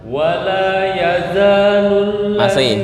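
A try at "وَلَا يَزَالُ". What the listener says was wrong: Masih tertahan. Lepas za zero. Za.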